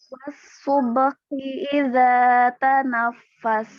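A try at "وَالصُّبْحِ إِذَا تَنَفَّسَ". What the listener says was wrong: Hati-hati, mikirin huruf H-nya, huruf B-nya jadi agak aneh tadi. Was-subhi dan was-subhi. Ya, jadi B-nya jangan sampai kayak menebal atau medok gitu jadi. Karena mikirin H-nya tadi supaya keluar ya gitu kan. Hi. Ya, jadi hati-hati biar.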